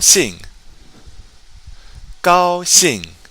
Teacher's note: and don't forget with that X as I'm always reminding you your tongue should be touching the back of your bottom teeth otherwise it's going to sound like an sh